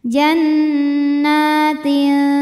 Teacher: untuk huruf ta dengungnya sedikit samarnya banyak kenapa karena tanya makhraj masih dekat dengan Nun